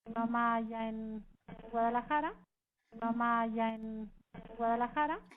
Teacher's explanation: O ascendente en Guadalajara, ¿sí? Desde ja hasta ra el tono sube.